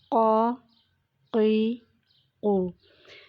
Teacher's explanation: قاف کی ادائیگی کرتے وقت زبان کی جڑ اور تالو کا نرم حصہ جو ہے اس کے ساتھ ہم نے ادا کیا ہے